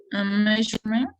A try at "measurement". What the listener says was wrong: Okay, I think it's good.